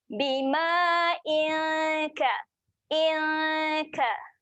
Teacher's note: Dengung dia terasa dah sedia nak pergi pangkal lidah tu.